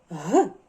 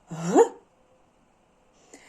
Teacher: звук г приголосна язичок створює перешкоду повітря він твердий Ага і він дзвінкий г Повторіть за мною г а цей